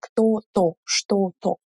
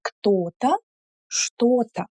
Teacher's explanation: Pay attention. We don't emphasize то.